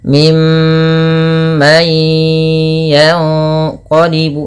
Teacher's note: suara mnya ditahan ya teman-teman jangan hanya lepas saja tapi tahan dulu dua harakat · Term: bacaan gunah